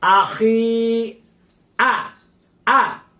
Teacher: এভাবে এক আলিফ পরিমাণ টেনে পড়তে হবে